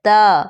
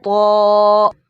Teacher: فرسٹ ہے تا جو باریک لیٹر ہے تا اور دوسرا ہے طا طا اور موٹی وائس اتی ہے طا ایسے طا تا طا تا طا ان تم تم مہتا